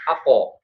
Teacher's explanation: Qof jahar dan syiddah. Maka qof itu mantul. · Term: qalqalah